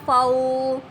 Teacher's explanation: واو ساکن اور پیچھے والے حرف پر زبر ہے، اور یہ حروف لین ہے، اس کو بھی ہم نے ایک الف کے برابر لمبا کرنا ہے